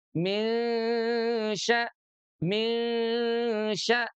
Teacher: dengung itu dua ketuk. Yang diketuknya itu adalah huruf sukunnya.